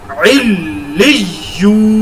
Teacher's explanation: اور یہاں پر شد والی یا کے بعد یا مدہ ہے اور یہاں پر شد والی یا کے بعد واو مدہ ہے. یا مدہ اور واو مدہ دونوں کو ایک الف کے برابر لمبا کر کے پڑھنا ہے